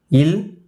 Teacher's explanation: மேல்வாய் பல்லின் அடியை நாக்கின் ஓரங்கள் தடித்து நெருங்குவதால் பிறக்கும் மெய்யெழுத்துக்கள்